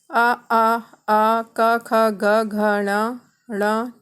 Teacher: उच्चारण स्थान है कंठ और वर्ण का नाम है कंठे